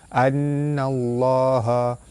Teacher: Nun sabdu hukumnya wajibul gunnah, dibaca tekan dan ditahan serta dengung 2 harkat